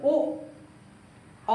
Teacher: हमारे ओष्ठ हमारे गोल हो जा रहे हैं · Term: वृत्तामुखी